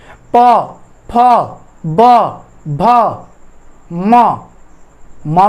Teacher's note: दोनों होठ होंगे। दोनों होठ आपस में जब चिपकेंगे तो उसको चिपकने पर उस वर्ण का, उस व्यंजन का उच्चारण होगा। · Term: द्वयोष्ठ